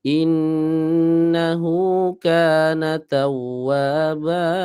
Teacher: Jadi kalau kita dengarkan suaranya tawwaba, sama, wa dengan ba itu ukurannya sama, tidak salah satunya lebih panjang.